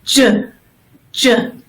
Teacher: You're going to make the same, you're going to say it the same exact way as CH, ch, but you're also going to feel the vibration in your throat.